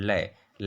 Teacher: जिह्वा के दोनों बगल से होकर के बाहर निकलती है, वह पार्श्विक व्यंजन कहलाता है। उदाहरण ल को हम पार्श्विक वर्ण की श्रेणी में रखते हैं।